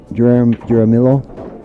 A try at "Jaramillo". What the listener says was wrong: There's no J, but that's an H. It's an H in south of the border.